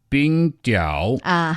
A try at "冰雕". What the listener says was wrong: The only thing you should be careful about is that 冰雕 first tone is ice sculpture, whereas 冰钓 fourth tone is ice fishing. They're quite close.